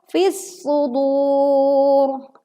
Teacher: kita leburkan alif lam ke huruf shad sehingga alif lam tidak terbaca karena langsung dileburkan ke huruf shad.